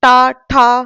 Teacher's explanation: तो आप देखिए ता दांत को टच किया थ द धा न सब में क्या करा दांत को टच हुआ और ट वर्ग में मूर्धा यानी कि ऊपर को पीछे को टच कर दिया ना मुड़ के